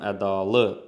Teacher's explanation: Deməli vurğu üçüncü hecəyə düşür. İkinci hecəyə düşmür.